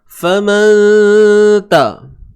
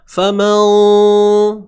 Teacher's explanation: Dengung yang nipis. Kadarnya 2 harakat lah.